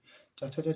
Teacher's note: तालव्य वर्ण हो गया ये, यानी कि तालु से उच्चारित है यहाँ